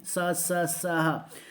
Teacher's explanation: जैसे कि हम जब इन शब्दों को, अक्षर वर्डों को बोलेंगे, जो वर्ड हैं स स स ह, तो हमारी जो आवाज़ जैसे ही निकलेगी तो एक हमारी जो वायु है वो हमारे मुंह को बहुत ही संघर्ष करती हुई, यानी चिपकती हुई निकलेगी प्रेशर से। स में क्या हुआ, एकदम जो हवा थी वो हमारे ऊपर नीचे पूरे मुंह को टच कर रही है, तो ये संघर्ष हो रहा है, इसलिए इनको बोलेंगे हम संघर्षी वर्ड। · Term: संघर्षी व्यंजन